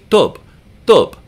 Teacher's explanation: Arabic we say tu tu so it's not quite English T you're doing the same thing with your mouth lips teeth and tongue but you're not making the puff of air in Arabic